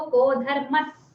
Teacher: ठीक है, यहाँ पर भी धर्मः सर्वा में धर्मस् बनाना है इसको, यहाँ विसर्ग ऐसा समझ लीजिए कि विसर्ग नहीं है, ये सकार है